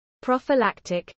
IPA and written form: ˌpɹɒfɪˈlæktɪk (prophylactic)